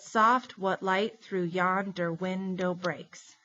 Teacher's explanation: So it's 10 syllables per line, and the stress is on every second syllable.